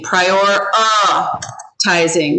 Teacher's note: this is called a schwa and it makes an uh sound